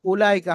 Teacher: ওটি লেখা এসছে পড়ায় আসবে না ওয়াওটি বাদ দিয়ে পড়তে হবে উলাইকা হামজার উপরে আপনার হামজার উপরে পেশ আছে